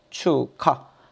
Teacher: 봐봐. 축, 하, 기역과 히읗이 결합하면 뭐가 돼요? 키읔이 돼요. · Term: 거센 소리 되기